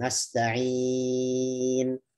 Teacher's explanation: Bisa dengan 2 harokat atau 4 harokat. Nasta'in atau 6 harokat.